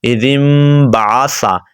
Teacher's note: اِذِم بَعَثَ، اِذِم بَعَثَ نہیں پڑھ رہا، اِذِم پڑھیں گے تو میم آ جائے گی، لیکن آپ نے میم کے 80% لینے ہیں اور نون کے 20% حصہ آپ نے اس کے اندر شامل کرنا ہے۔ جب ایسے شامل کریں گے تو انشاءاللہ آپ کو پڑھنا آ جائے گا۔